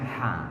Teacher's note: huruf Ha Itu keluarga tenggorokan bagian tengah